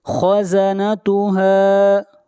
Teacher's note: خا حروف مستعلیہ میں سے ہے، خا کو موٹا پڑھیں گے۔